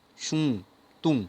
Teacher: તો સ અનુનાસિક એટલે શું કે જે શબ્દોનું ઉચ્ચારણ કરીએ ત્યારે નાકમાંથી થોડી હવા નીકળે તો એને કેવો કહેવાય સાનુનાસિક શબ્દ કહેવાય.